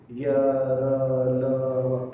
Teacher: जिनके उच्चारण में जीभ जो है ज्यादा हरकत नहीं करती या मुख के अंदर जो है किसी भाग को पूरी तरह टच नहीं करती, इसलिए इसको क्या बोलते हैं, अंतस्थ व्यंजन।